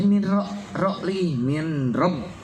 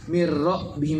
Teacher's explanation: nunnya dibuang sama sekali. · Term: Idgham bila gunnah